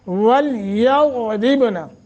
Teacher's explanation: ضاد موٹا را باریک